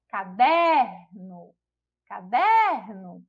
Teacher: A gente já identifica aí que a sílaba tônica é a sílaba der, que também não é a última sílaba, então não é a palavra oxítona.